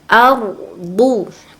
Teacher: Nah, patokannya bukan du itu, tapi a-nya itu bertemu dengan ro, disebut dengan tafkim, dibaca tebal